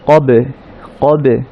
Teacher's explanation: আমরা বলেছিলাম যে বা সাকিন হচ্ছে কলকলার শব্দ, অর্থাৎ সাউন্ডটা রিভার্ভ হবে